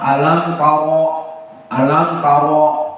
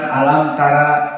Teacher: Dan ra'nya di sini mufakhamah alam taro, bukan alam tara.